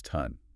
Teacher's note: a long hissy sound like S or F gets turned into a short punchy sound. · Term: stopping